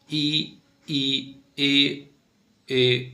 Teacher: जीवा के आधार पर तीन अग्र स्वर मध्य स्वर पश्च स्वर जीभ के सबसे अग्र भाग से उच्चारण